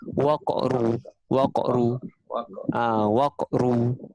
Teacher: Qalqalah, tapi kita panggil qalqalah sughra. Di mana dia tengah-tengah perkataan kan. Kita sebutkan qalqalah lantunan tu sikit je.